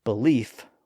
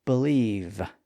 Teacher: It's just important to know that the suffixes attached to verbs also tended to cause the final sound to be voiced, and in this case caused the F sound to switch to a V sound. So you might have a belief with an F sound at the end, but if you put that belief into action, you believe with a V sound at the end.